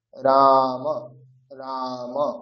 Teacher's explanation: যেহেতু র এর পরে আছে আ মানে দীর্ঘ। তাহলে উচ্চারণটা করতে হবে দীর্ঘ।